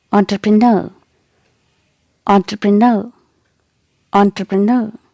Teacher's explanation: e n is not pronounced like n it is pronounced like on · the primary stress is given on the last syllable